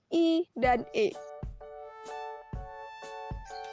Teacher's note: vokal yang diucapkan dengan bentuk bibir tidak bulat atau terbentang lebar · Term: vokal Tabulet